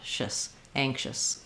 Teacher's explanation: So it's going to be a schwa, sound like but go as quickly as you can from your SH to your S sound